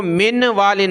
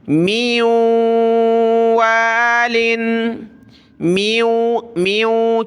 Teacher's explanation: اب ہم نے میم کو واو کے ساتھ ملانا ہے، اور نون کی وجہ سے ہم نے یہاں ناک میں آواز پیدا کرنی ہے، گنگنانا ہے